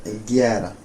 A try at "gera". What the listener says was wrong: Yeah, gera.